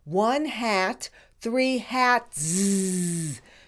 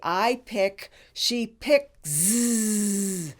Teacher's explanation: grammar rule number 1, where the grammar S is pronounced with no voice